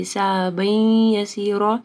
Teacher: تنوین کے بعد یا آ رہا ہے، ادغام آ رہا ہے غنہ کے ساتھ